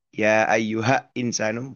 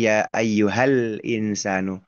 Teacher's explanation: Ya ayyuha insanu bukan tetapi ya ayyuhal insanu lam sukunnya dibaca jelas izhar saling lepas dengan huruf hamzahnya tidak tidak melebur sama sekali dengan huruf hamzah